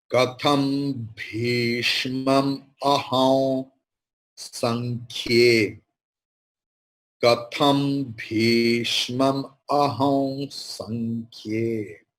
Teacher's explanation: Ma is the ending, nasal word. So anuswara will take the pronunciation of makara.